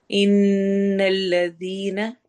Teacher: تجوید میں دیکھیں، اعوذ باللہ من الشیطان الرجیم بسم اللہ الرحمن الرحیم ان الذین، ان میں نون پر غنہ ہو رہا ہے۔ غنہ کا مطلب ہوتا ہے ناک میں آواز لے کے جانا، تو ان میں ناک میں آواز جائے گی۔